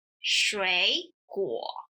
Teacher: Let's look at the word fruit, 水果, as an example. Since it has 2 third tones in a row, the first one is converted into the second tone